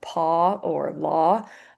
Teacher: So if I said um paw or law, I'm not saying them with the O sound. I am saying them as a short O.